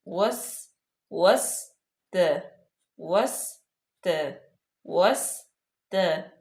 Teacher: واو جو ہے اس پہ ہونٹوں کو گول کریں گے، سین پہ بالکل سیٹی کی آواز آئے سختی سے۔ وس وس ت وس ت وس ت عینو، عین کا مخرج جو ہے وہ اچھے طریقے سے ادا کریں، واضح ہونا چاہیے۔